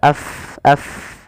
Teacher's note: Huruf fa itu makhra di bibir tapi tidak rapat bibir kita.